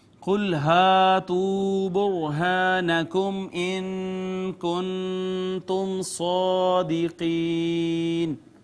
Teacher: الف مدہ ہے ناظرین، پھر واو مدہ ہے، پھر را ساکن ما قبل مضموم ہے، را مفخم پڑھی جائے گی. الف مدہ، میم ساکن پہ اظہار شفوی، نون ساکن پہ اخفا، پھر نون ساکن پہ اخفا، پھر میم ساکن پہ اظہار شفوی.